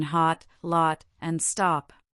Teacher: It can be the short O a deep open sound